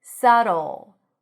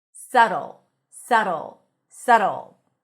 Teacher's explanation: There is no B, and the T sounds like a very short D.